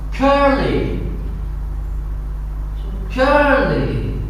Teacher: The first syllable is stressed.